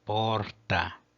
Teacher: porta contém a primeira sílaba longa por posição porque nós temos o o seguido por duas consoantes que são o RT